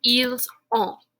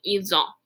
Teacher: we pronounce the S on il or elle because we are liaising to that O, that vowel sound